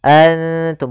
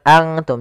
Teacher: Karena dia ikhfa itu menyamarkan huruf kepada huruf setelahnya. Yaitu nunnya disamarkan kepada huruf ta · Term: ikhfa aqrab